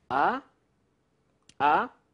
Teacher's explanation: So the second one is rising. It's a rising tone.